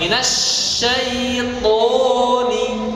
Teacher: Kalau ta ada nafas yang keluar atau hamas, adapun to sebaliknya. To itu tidak ada nafas yang keluar. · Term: huruf to